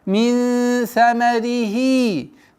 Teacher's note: Удержание назализации, сокрытие, правило сокрытия в размере двух огласовок. Мин самарихи.